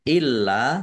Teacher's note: lamnya dibaca dobel ada tasdidnya ditekan biar tampak dobelnya